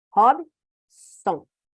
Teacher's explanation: paroxítonas. A penúltima sílaba é a mais forte.